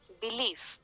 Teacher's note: the first syllable is unstressed the second syllable is stressed so this pattern where in one given foot there are two · So B is unstressed, leaf is stressed. · Okay, so if we consider belief to be part of one single foot, where there are two syllables, B and leaf, what is the pattern that we are getting? The first syllable is unstressed, the second syllable is stressed. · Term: iambic pattern